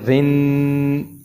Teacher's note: ابھی میں نے آپ کو پچھلی تختی میں بتایا تھا کہ جرا کے نیچے جب زیر ہوگی، دو زیریں ہوگی تو را باریک پڑی جائے گی